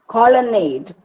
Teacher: So in all these words, you have a pattern which shows two unstressed syllables with a stressed syllable at the end. · la is not stressed and nade is stressed. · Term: anapaest